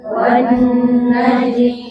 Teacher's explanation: Gunah itu dilamakan sama. Tapi dilamakannya di mana? Di hidung, di rongga hidung, Bu.